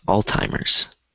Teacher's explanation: So this word, so it's pronounced like this, Alzheimer's. I know there's no T in it, and so you're wondering where the T is coming from, but that's how it's pronounced